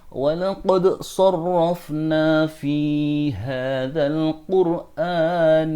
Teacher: maka dal di sini wajib dibaca izhar atau jelas dalam membaca qad, dan tidak boleh ditinggalkan dal qalqalahnya